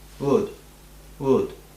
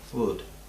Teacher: La L es muda, no suena.